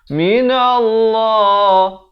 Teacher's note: Nun di sini idgham bi gunnah, dengungkan 2 harakat.